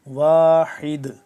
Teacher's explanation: دال ہے ساکن ہو گیا یہاں پہ، اس کی وجہ سے وقف کی وجہ سے دال ہو گیا یہاں پہ ساکن، تو اس کو ہم قلقلہ کریں گے